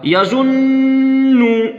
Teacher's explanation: नून पे तशदीद है, यहीं पे गुन्ना होगा